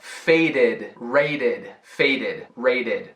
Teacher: Primeiro, você vai se perguntar, o verbo termina com som de D ou de T? Caso sim, o ED é uma sílaba extra com som de UD. Som de D no fim.